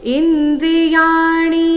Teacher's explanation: ಇಲ್ಲಿ ಯ ದೀರ್ಘ ಮತ್ತೆ ಮುಂದೆ ಣಿ ರಸ್ವ ಬರಬೇಕು